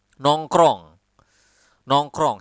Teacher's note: we have so many nasal sound and R that you need to roll